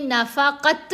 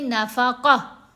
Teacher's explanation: लेकिन अगर तमरबुता ता के ऊपर वक्फ आता है, जैसे फॉर एग्ज़ाम्पल यहाँ हम वक्फ करेंगे, गोल वाली ता के ऊपर वक्फ आ जाए, 2 ज़बर हों, चाहे 2 ज़ेर चाहे 2 पेश, तो हमने उस लेटर को हरकत के साथ नहीं पढ़ना, बल्कि तमरबुता ता की आवाज़ ही बदल जाती है हा साकिन में